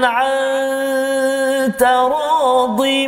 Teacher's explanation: Nanti kita jumpa taradin, nun mati bertemu dengan ta, ikhfa hakiki juga, kita dengung dua harakat